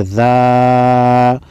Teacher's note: ذال الف زبر ذا، خالی الف سے پہلے ذال پر زبر ہے، الف مادہ ہے، ایک الف کے مقدار یعنی 1 سیکنڈ لمبا کریں گے۔